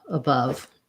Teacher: we have a reduced uh reduced vowel sound in the unstressed schwa